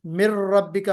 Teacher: नून के बाद रा आ गया तो उस नून को हमने रा में मर्ज किया, मिर रब्बिका हो गया।